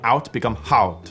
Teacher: The exception to this is when saying English words that start with a vowel. Sometimes they do what's called hypercorrection, and they actually add an H in the beginning. So words like out become haut.